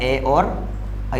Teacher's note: कंठ और तालु इन दोनों से मिलकर क्या बोला जाता है, ए और ऐ बोला जाता है। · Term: कंठ तालु